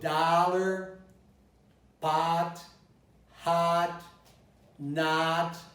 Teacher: So on many occasions I see an O, but I pronounce an ah.